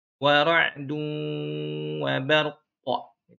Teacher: Cara wakofnya itu ro dengan qaf mati kan, ujungnya disukunkan sehingga muncul qalqalah.